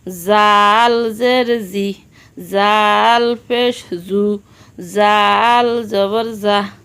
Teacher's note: জাল জিহ্বার আগা থেকে নরমভাবে আদায় হবে, নইলে জিম যা অক্ষর আদায় হয়ে পড়া হারাম হয়ে যাবে।